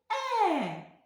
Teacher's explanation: ротик відкривається але не так широко як при вимові звука А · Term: звук е